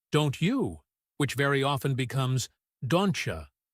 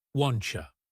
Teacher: The T sound and the Y sound are literally melting together into a ch sound.